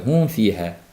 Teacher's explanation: fa ham pastki labimizdan va labimizga yaqin bo'lgan tepa tishimizdan chiqadi. Hum fiha bo'lib qoladi.